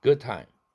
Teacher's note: 뒤에 time 할 때 트 자음 걸려서 비개방음으로 드입니다.